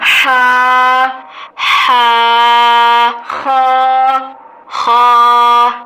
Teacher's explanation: ہا اور خا حلق سے ادا ہوتے ہیں